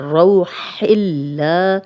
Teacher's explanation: اب یہاں پہ اللہ کا لام جو ہے وہ باریک پڑھا جائے گا ہی لام پہ کھڑا زبر ہے 2 حرکات لمبا کریں گے.